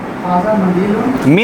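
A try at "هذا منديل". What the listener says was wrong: مندیل، میم کی زیر کے ساتھ. ہاذا مندیل، رومال. ہاذا مندیل، یہ رومال ہے.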